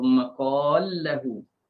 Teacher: Lam bertemu lam dan ada mat sebelum idgham tu bolehlah panjang 2, 4 ataupun 6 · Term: idgham kabir